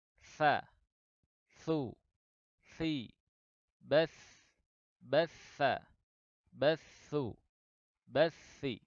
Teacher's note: Huruf ujung lidah bertemu dengan ujung gigi seri atas.